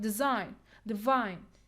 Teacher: syllable started with a consonant like design divine and so on so we have to put the stress on the second syllable not the first syllable